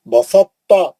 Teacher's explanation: ان کی ادائی میں تا کا اطباق مانے تا کا موٹا پن باقی رکھ کر ادغام کیا جاتا ہے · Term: ادغام متجانسین